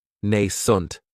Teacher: this word has 2 syllables, and the stress is on that first syllable. It has the long A sound, nascent.